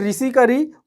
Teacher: री का उच्चारण स्थान जो है, ऋषि का री, उसका उच्चारण स्थान क्या है, मूर्धा है